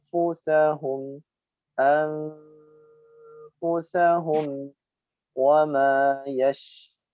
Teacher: Wa ma yash, ya dengan desis yang memanjang. · Nun sukun bertemu fa, dibaca ikhfa. Ditekan, ditahan.